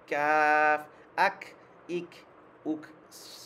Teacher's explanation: সামান্য বাতাস বের হবে এটা হামসার হরফ তো এটা একটু মানে স্মুথ ভাবে একটু সাউন্ড বের হবে